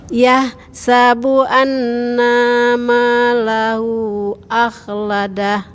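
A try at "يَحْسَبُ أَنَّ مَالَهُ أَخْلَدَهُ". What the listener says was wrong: Nanya pendek Bu. Annamalahu akhladah.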